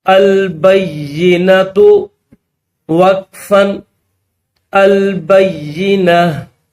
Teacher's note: یہ گولتا جب اسٹاپ کریں گے تو ہا بن جائے گی